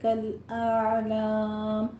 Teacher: کالأعلام میں پہلے حمزہ کی آواز آئے گی، پھر عین کی وسط حلق سے ، اور عین کے اوپر قلقلہ بھی نہیں کرنا، نہیں کہنا،